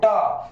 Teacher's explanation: टा सबसे ऊपर जाकर सटेगा तुम्हारा जीभ, और वही तुम्हारा मूर्धा